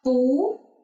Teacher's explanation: We can change 不 to second tone as 不. So 不, this word sounds like a question, like what? The second tone.